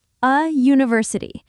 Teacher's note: The U sounds like U, a consonant Y sound.